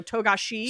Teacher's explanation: You put the accent on the she at the end, so Togashi. So don't put the emphasis on the wrong syllable.